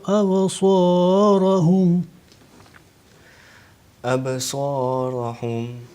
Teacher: Sod qui est prononcé de façon épaisse. N'oubliez surtout pas qalqala sur la lettre Ba.